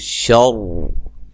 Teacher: اگر ہم یہاں وقف کر دیتے ہیں تو پھر یہ را موٹی ہوگی